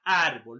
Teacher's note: la grave también se le conoce como parásitos o llanas término la mayor fuerza de voz está en la penúltima sílaba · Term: graves o paroxítonas